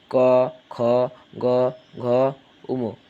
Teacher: ছ বর্গের জ তালিব বর্ষা এরপর কন্ঠ ব্যঞ্জন কন্ঠ ব্যঞ্জন এবং কন্ঠ ব্যঞ্জনটা হচ্ছে জীভের পেছনের অংশ নরম তলের সঙ্গে লাগবে